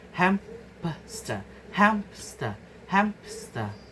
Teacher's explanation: And the second is acquiescent, adding a consonant. Example, hamster, adding a p sound.